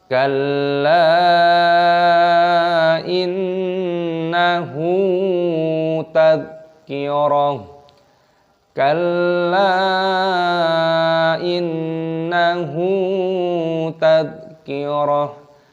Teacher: Lamnya ditasdid, ditekan kal dan dipanjangkan lam alifnya, panjangkan 5 ketukan, mad jaiz munfasil